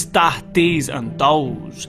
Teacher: Here the D replaces TH